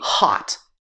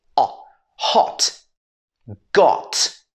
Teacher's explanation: In the Southern British accent, this would be hot. American English would be hot. It would be ah. But in the accent that I'm teaching, it's o. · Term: the o sound